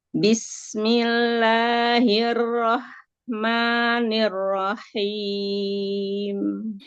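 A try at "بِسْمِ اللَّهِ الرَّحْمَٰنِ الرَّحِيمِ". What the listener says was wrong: Kasrohnya turunkan lagi rahang dan bibir bawahnya.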